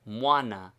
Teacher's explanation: Before a and e, the u becomes a consonant, and the prefix appears as mw, moi. Before o and u, the u is very frequently dropped, and the m alone is heard.